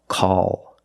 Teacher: after a vowel at the end of a word we use the dark l call or if the L is after a vowel but before